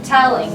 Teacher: the emphasis the stress is on the first part of the word no matter what